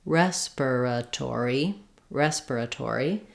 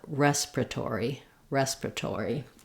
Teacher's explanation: is a short unstressed part of the word in both cases in American English it is stressed on the rest syllable rest is long and the other syllables are short